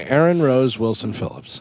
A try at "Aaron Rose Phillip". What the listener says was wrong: No. Aaron Rose Phillip. No Wilson. Just Phillip. No, Aaron. Aaron.